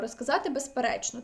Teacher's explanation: дзвінкий приголосний з у префіксах роз без тощо перед наступним глухим приголосним у швидкому мовленні може частково оглушуватися